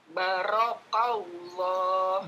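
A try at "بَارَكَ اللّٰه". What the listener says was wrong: Ba-nya panjang dua harokat, ada alifnya. Rok-nya jangan ditesdidkan, jangan ditekan. Barakallah.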